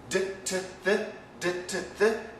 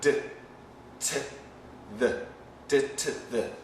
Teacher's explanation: They're all using the front part, the teeth, and the alveolar ridge. And they're using some vibration sometimes, but sometimes not. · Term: sound family